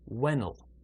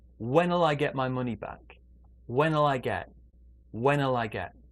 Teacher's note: they joined together the n in when and the ul in the contraction